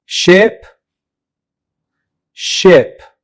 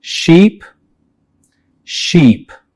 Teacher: Ship is pronounced with a short vowel e while sheep uses the long vowel e.